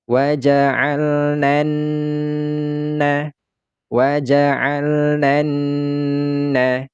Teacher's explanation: suara alif lam ini tidak kita dengarkan atau ini dianggap dianggap saja tidak ada sehingga suara lam sukun ini tidak lagi terdengar ya Sehingga huruf nun ini langsung lompat kepada huruf nun yang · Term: huruf Syamsiah